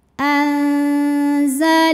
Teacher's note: Karena ada hak dhamir yang diapit 2 huruf hidup dan huruf setelahnya selain hamzah. Maka hak dhamir ini kita panjangkan 2 harokat. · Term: mad silah qasirah